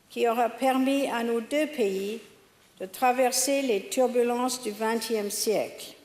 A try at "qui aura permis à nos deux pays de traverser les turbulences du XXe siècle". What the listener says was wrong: Et ce qu'elle pourrait améliorer, c'est les sons pe, be et te. Elle les prononce à l'anglaise, c'est-à-dire en soufflant beaucoup. P, b, te. Alors qu'en français, c'est pe, be, te.